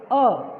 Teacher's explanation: हमारा मुख की गुहा खुल जाती है और जिह्वा जो हमारी हल्की सी ऊपर उठती है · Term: मध्य स्वर